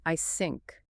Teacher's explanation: It is just a breath. If you keep your tongue trapped behind your teeth, the air hits a solid wall, and it escapes from the sides, creating an S sound.